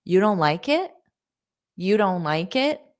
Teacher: But native speakers casually, conversationally, especially in spoken English, text messages, quick emails, will use statements, but just add a question. So to use a rising intonation to make it sound like a question